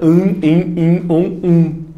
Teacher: 2 letras para um som de vogal. Só que necessariamente esse som de vogal vai ser um som de vogal nasalizada.